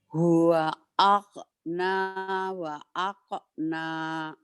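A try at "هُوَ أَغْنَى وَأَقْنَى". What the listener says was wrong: Agnanya belum ya. Nanti dilatih. G-nya kerasin aja. Agnes. Agnia. Agrobisnis. Agro. G. Guru. Anggur. Nggak aknur kan? Anggur. G. Agna. Huwa agna wa aqna.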